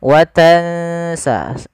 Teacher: setelahnya watansaah kita langsung bacakan nunnya ke makhraj daripada huruf Sin huruf Sin itu ujung lidahnya makhrajnya ujung lidah kita di antara Gigi atas dan Gigi bawah itu ada tiga Sin Zai dan Shad Nah itu tiga tempatnya